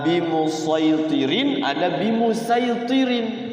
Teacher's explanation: sadnya harus dibaca Shad itu tetap tetap sad istila tebal